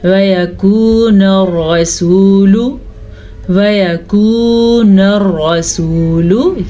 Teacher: और ये भी वाव मद्दा है, इसे भी खींच के पढ़ा, लेकिन रॉ को पूर पढ़ा क्योंकि रॉ पे ज़बर है और रॉ पे ठहरेंगे नहीं, ठीक नहीं होता रॉ पे ठहरना।